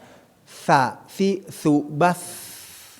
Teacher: bukan tumma Tum jadi ujung apa keluar dari ujung lidah nah ujung lidah dikeluarkan sedikit bertemu dengan gigi seri bagian atas